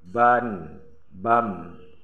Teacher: Ini mati nun, sukun nun bertemu dengan ba iklab, menukarkan suara nun ke dalam suara mim.